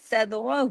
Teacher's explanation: صاد heavy, دال پہ کلکلا